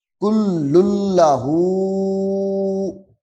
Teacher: یہ ہا کے اوپر مد اصلی ہے، ایک الف کے برابر لمبا کرنا ہے.